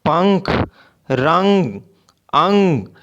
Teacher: आप भी बच्चों एक बार ये शब्द बोल कर देखें, जैसे पंख, रंग, अंग, तो आप इस बिंदु के उच्चारण में हवा केवल नाक से ही निकलेगी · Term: अनुस्वार